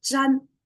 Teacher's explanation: it's kind of peaceful, right? Because it's flat tone.